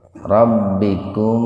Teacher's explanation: Mimnya dibaca jelas, dibaca idhar di bibir. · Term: idhar syafawi